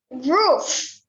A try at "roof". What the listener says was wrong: Roof. No, F. F. The tip will bite the lip in this way.